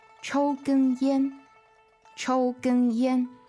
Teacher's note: So all three of those syllables are first tone.